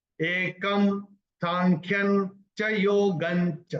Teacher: क्योंकि क के ऊपर अनुस्वार के बाद का अक्षर है स, तो उसका उच्चारण होगा म,